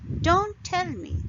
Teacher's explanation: In this case, I don't want to tell, or I don't want some person to tell me something. So I put stress on don't and tell both.